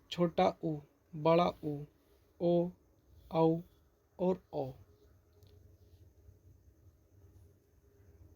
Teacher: इसी प्रकार व्रतमुखी को देखते हैं जिन स्वरों के उच्चारण में होठ गोलाकार होते हैं वे व्रतमुखी स्वर कहे जाते हैं